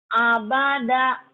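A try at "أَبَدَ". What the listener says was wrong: Abada pendek, KB, nggak ada yang panjang.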